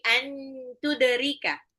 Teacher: Ini ikfa berarti dia harus disamarkan. Ya, nun sukun ketemu ta. Bukan ang tapi an tuderika.